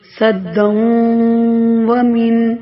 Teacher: واو میں ادغام ہو رہا ہے بلا غنہ